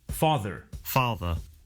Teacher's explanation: Notice that the final R sound is not pronounced in British English. Father ends in a simple schwa vowel